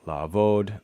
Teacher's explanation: La'avod, the ein lowers the vowel.